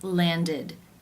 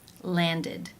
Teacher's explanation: form ends an either D or T sound in this case the ending is pronounced with the e as in sit vowel and the D sound